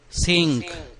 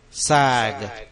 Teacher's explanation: the G is a voice consonant it makes the vowel before it longer